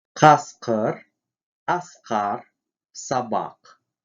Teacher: Глухой, заднеязычный. При произнесении этого звука задняя часть языка смыкается с задней частью неба, после чего воздух мгновенно вырывается.